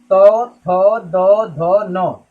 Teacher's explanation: यानी जब भी हम पढ़ेंगे तो इसमें जो बोलेंगे वर्ड वो हमारे दांत को टच करेगा। जो वर्ड बोलेंगे उस समय हमारी जीभ जो होती है वो दांत को टच करती है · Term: दंत व्यंजन